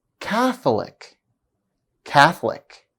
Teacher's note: Catholic, for instance, is stressed on the first syllable instead of the second one, as rule number 2 states.